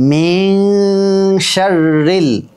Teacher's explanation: মিন এখানে কিন্তু ইকফার গুন্না, মিন গুন্না কিন্তু এক আলিফ